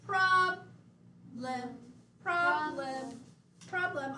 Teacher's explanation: We accent on the first syllable.